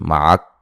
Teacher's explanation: معک جب وقف کریں گے تو کاف کو ساکن کر دیں گے اور آواز نہیں آنی چاہیے